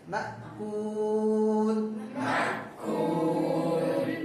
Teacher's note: மக்கூல் ஹம்ஸாவை தெளிவா சொல்லணும் மஹ் என்று சொல்லக்கூடாது மா என்று நீட்டி விடக்கூடாது